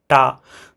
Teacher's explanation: তো তারপরে কিন্তু কনসোনেন্ট যদি আমরা দেখি তাহলে পা, এই যে বাইলেভিয়াল সাউন্ড, দুইটা ঠোঁট কানেক্ট হচ্ছে, টা তো দাঁতের সাথে আমাদের জিহ্বা tip of the টাং connect হচ্ছে